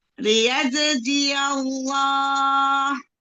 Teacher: yaitu huruf ya-nya sebelumnya itu berharokat fathah, maka menjadi tebal lafaz jalalahnya